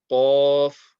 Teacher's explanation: This comes from the back end of the tongue being raised.